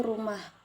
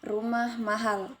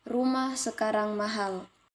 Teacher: setiap kalimat diakhiri dengan pola intonasi 2 31 dalam penulisan pola intonasi kalimat berita ini dilambangkan dengan tanda titik